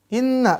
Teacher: Nun bertasdid dengungkan di makhraj huruf nun